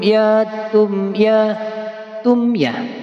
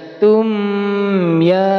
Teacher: izhar harus jelas. Gak boleh di dengungkan, enggak boleh dipanjangkan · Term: izhar syafawi